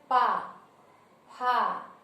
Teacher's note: तो जब हम कहते हैं पा, फा, तो हमारे दोनों होठ जो हैं वो हम जब पा का उच्चारण करते हैं तो हमारे दोनों होठ आपस में स्पर्श करते हैं। तो होठों की स्पर्श की वजह से इसको कहा गया है ओष्ठ वर्ण, क्योंकि यह इसका उच्चारण हमारे होठों से होता है।